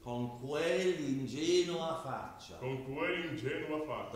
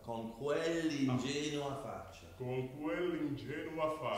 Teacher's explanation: So you use the L to go into the vowel. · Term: Double L